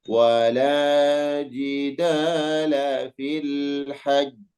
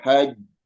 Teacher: Jadi ditasydidkan dulu, ditasydidkan syiddah, tasydid, baru kemudian yuqalqil, diqalqalahkan. Enggak boleh haja terdengar qalqalahnya tapi hilang tasydidnya, enggak boleh. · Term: qalqalah kubra